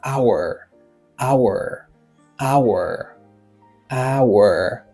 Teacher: H lan li silent, ça veut dire li pas prononcé.